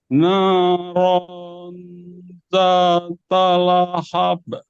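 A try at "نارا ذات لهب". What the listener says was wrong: Tapi jangan ada jeda dulu, Pak. Ketika masuk ke ro, langsung eng. Ya, masuk vokal eng. Narong, narong zata lahab.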